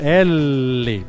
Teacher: perceba que o som ele sai do lado da da língua nos dois lados da língua por isso que ela é uma lateral